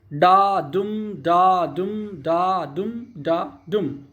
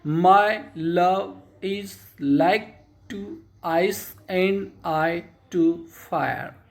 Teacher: 10 beats पर line मेड up alternating unstressed syllable and stressed syllable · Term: आयम्बिक पेंटामीटर